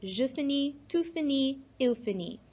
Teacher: So fin-i with a T at the end. Now all of these, the final consonant is silent